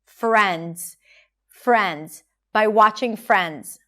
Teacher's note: Notice the R sound here, round your lips, and make sure that the transition between the F and the R is smooth